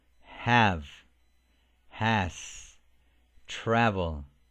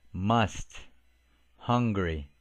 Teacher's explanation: the low front vowel a the mid Central vowel uh